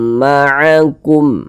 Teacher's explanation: dibaca tebal sehingganya pangkal lisan kita naik terangkat ke atas ketika Kita mengucapkannya